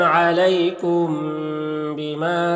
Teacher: میم ساکن کے بعد با ہے تو اخفاء شفوی ہوگا، غن اور اخفاء کے ساتھ پڑھیں گے